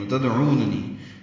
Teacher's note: دال ساکن پہ قلقلہ ہے، او واو مدہ ہے، عین وسط حلق سے ادا ہوگا. نون دونوں جلدی سے پڑھنے ہیں، پہلے والے نون کو اور دوسرے نون کو نی یا مدہ نون کے یا سے ملا دیں گے.